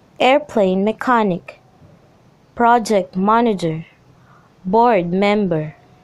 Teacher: Noun plus compound nouns are two-word compound nouns. In noun plus compound noun, the stress is on the first word.